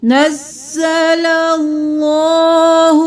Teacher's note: اللہ کا لفظ موٹا کیونکہ اس سے پہلے والے حرف پر زبر ہے تو ہم اللہ کے لفظ کو موٹا پڑھیں گے.